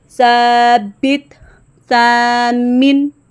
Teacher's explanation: سا پڑھتے ہوئے سین کی بات بالکل نہیں آنی چاہیے، ورنہ ہمارا یہ مخرج بالکل چینج ہو جائے گا